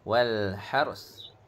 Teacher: Wal والحرث Dia tak ada takrir lah. Bila kita waqaf, dia masuk secara idgham naqis. Jadi kita buang takrir ra tu.